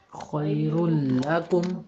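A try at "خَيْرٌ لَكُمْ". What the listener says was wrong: شاباش، بالکل ٹھیک ہے.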